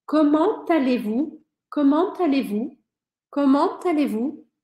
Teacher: eu vou pronunciar esse T do comment porque a próxima palavra começa com vogal.